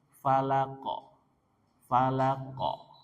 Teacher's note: qofnya sukun maka diqalqalah pantulkan